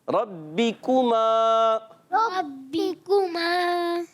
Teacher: را کا زبر جو ہے وہ پر ہوتا ہے, بقیہ یہ کاف باریک رہے, یہ سارے حرف باریک آ رہے ہیں آگے, سب باریک, صرف را کا زبر پر ہے.